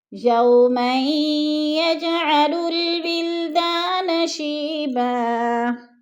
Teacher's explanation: یوما یجعل الولدان شیبا، ولدان شیبا، ولدا، دا کو تھوڑا سامنے کھینچنا ہے، الف مدہ ہے، شی پہ یا مدہ ہے، یا ساکن سے پہلے شین کے نیچے زیر ہے تو یا مدہ کو تھوڑا سا کھینچ کر پڑھنا ہے